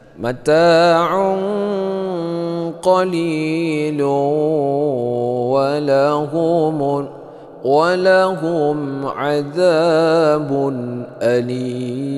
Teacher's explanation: Mata mad tabi'i panjangnya 2 harakat seperti biasa.